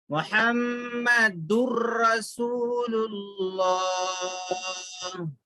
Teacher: تنوین کی آواز میں جو نون کی آواز ہوتی ہے وہ نون کو نہیں پڑھیں گے، را سے ملا کر پڑھیں گے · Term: ادغام بلا غنہ